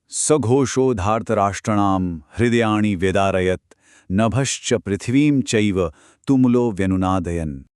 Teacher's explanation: सबसे पहले घोषो बोलते समय जो श है वो मूर्धन्य है, यानी आपकी जीभ तालु को छूनी चाहिए। फिर धार्तराष्ट्राणाम में आ की मात्रा को लंबा खींचना है